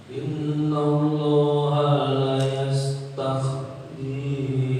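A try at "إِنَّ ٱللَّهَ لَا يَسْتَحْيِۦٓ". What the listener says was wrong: Yastahi jangan di kha, tapi ha yastahi biasa.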